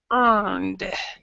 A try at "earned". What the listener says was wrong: just basically this E is not there.